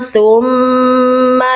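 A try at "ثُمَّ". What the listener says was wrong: Maaf saya potong Bunda, jangan nyeret ya. Su-nya satu harokat langsung. Nah itu jadi kayaknya su-nya kayak kebanyakan sedikit.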